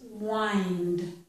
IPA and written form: wɑɪnd (wind)